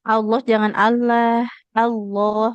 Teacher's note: Nah, hurufnya lamnya dia tebal di lafaz Allah ya.